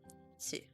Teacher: The second exception is tsu, which adds an S sound and is pronounced with less emphasis on the T